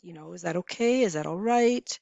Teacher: If you end with a rising intonation, that sounds like a question.